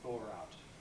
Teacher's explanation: When the next word begins with a vowel, to thaw out, then we can pronounce it thaw with the R